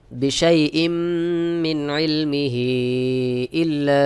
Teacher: বিশাই ইম মিন ইলমিহি ইল্লা, এখানে দেখুন হা খাড়া জের হি, এক আলিফ মাদ, এর পরের শব্দের শুরুতে আলিফের হামজাহ রয়েছে, এক আলিফের জায়গায় তিন আলিফ মাদ করে পড়তে হবে বা তিন আলিফ টান দিয়ে পড়তে হবে। এটাকে বলা হয় মাদ্দে মুনফাসিল।